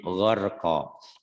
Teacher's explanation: Orang Jawa tuh kadang-kadang ain sama G matinya ke K juga.